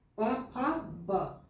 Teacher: ये जो ब है ये स्पर्श व्यंजन का है, इसका उच्चारण स्थान होठ है